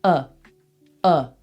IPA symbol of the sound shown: ə